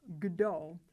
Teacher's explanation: The consonant in front of it, k, is voiceless. Because the last consonant in the group is voiced, the consonant right in front of it has to be pronounced as its voiced pair. · Where a voiceless consonant is followed by a voiced consonant, the voiceless consonant changes to its voiced pair. The word kdo means who.